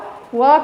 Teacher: व का उच्चारण स्थान दंत प्लस ओष्ठ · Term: दंत ओष्ठ